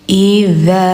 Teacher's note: Idza, lidah ujung tempel gigi atas.